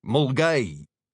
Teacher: when it's spoken quickly, the first syllable will vowel shift to a short u. So it sounds like mulgay.